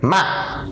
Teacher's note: In English, this means the low falling tone. In order to pronounce this tone correctly, you only have to lower your voice quickly and briefly.